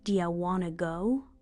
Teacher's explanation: Letters like the T in want to get dropped.